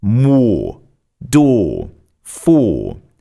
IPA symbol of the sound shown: ɔː